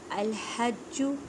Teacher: الحج ہا کو ادا کرتے وقت خیال رکھیں کہ ہا کو حلق کے درمیان والے حصے سے ادا کریں۔